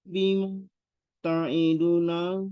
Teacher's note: enggak enggak ada mad di situ. Ainnya pendek